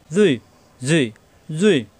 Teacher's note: জিব্বা উপরে দাঁতের আগায়, জুই মোটা হরফ